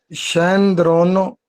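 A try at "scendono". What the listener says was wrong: शेंद्रोनो, ये आर किधर आ रहा है? पहले तो आपने एरे को काट लेना, फिर साथ कुछ लगाना है। शेंदोनो, हाँ शेंदोनो।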